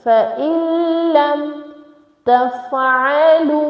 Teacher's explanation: Next is فَإِلَّمْ. Now noon is silent, okay? There is sakin at noon, but the next letter is lam, so we have to match hamza kasra directly with lam. So it is فَإِلَّمْ تَفْعَلُوا, lam with waw sakin, so we make it long for 1 second.